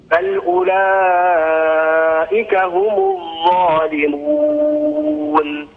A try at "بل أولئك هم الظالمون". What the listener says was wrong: حسبك بارك الله فيك أخي محسن ما شاء الله قراءة متقنة فقط يا أخي انتبه لصفة الجهر في حرف الراء يعني سأتكلم عن هذا أكثر لكن آسف الآن معي الأخ معاذ حياك الله السلام عليكم انقطع الاتصال مع الأخ معاذ نعود للأخ محسن ما شاء الله يا أخي محسن القراءة متقنة عندك